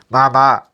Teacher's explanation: இங்கு ங் இந்த அப்படின்னு சொல்லி பாருங்க மூக்குல இருந்து தான் சவுண்ட் வரும் மூக்கை புடிச்சிட்டு மாமா சொல்லுங்க சவுண்டே கேட்காது